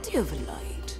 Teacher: Have gets reduced to of and linked to the aforementioned do. Altogether, this sounds like do of.